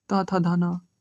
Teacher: त थ ध न दंत से दांत।